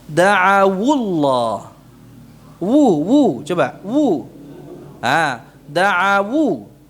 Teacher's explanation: ketika disambung dengan lafzul jalalah yang awalannya sukun diharakatkan huruf linnya menjadi da'awu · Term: wawulin